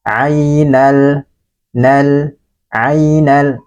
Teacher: Ini dibaca ringan. Ainal, nal, lamnya dibaca jelas, langsung masuk kepada huruf ya. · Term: izhar qamariyah